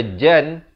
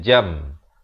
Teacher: jadi nah buat macam mana Kalau bertemu begini Jadi kita tukarkan maksud iqlab ialah menukarkan apa yang ditukarkan bunyi Nun kepada bunyi mim jadi daripada Jan kita jadi baca jam tetapi dipanjangkan 2 harakat